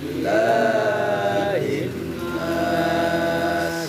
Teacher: Ilahi, ilah, langsung haknya dari bawah tenggorokan ke dada. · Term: hak besar